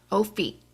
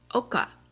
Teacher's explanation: it has a glottal stop so it's going to get cut off and not drag out